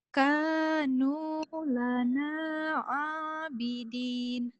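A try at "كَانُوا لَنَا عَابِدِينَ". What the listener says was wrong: Kanu lana abidina. Masih dibaca ya ujungnya ya. Kalau ikro ini berapa? Ikro 3. Kalau ikro 4 nanti dimatikan. Kanu lana abidina.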